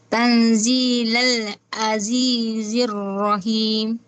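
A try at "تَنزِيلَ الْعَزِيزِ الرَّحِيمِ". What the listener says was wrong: Sa ain lang ang pronunciation mo.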